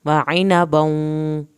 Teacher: यहाँ पर वाव पे एक अलिफ के बराबर देर लगेगी